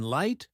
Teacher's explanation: in L, as in light, your tongue touches the top just behind your teeth.